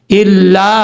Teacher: 2.5 سے 3 الف کے برابر آپ اس کو لمبا کر کے پڑھ سکتے ہیں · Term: مد منفصل